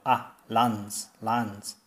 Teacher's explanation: It's almost like it's not a diphthong, but a single vowel. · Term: shorten diphthongs